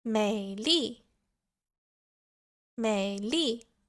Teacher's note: a very low pitch, and it almost dips a little bit lower in the middle of the word. The tone sounds a little bit doubtful and almost skeptical. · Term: third tone